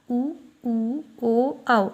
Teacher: Next है होठों की स्थिति के आधार पर स्वर 2 टाइप के होते हैं, व्रतमुखी, अव्रतमुखी। जिनके उच्चारण में होठ गोलाकार होते हैं उन्हें व्रतमुखी कहते हैं